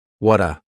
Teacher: that T at the end of the word what is going to change to a D sound this is really typical of American English where a t that's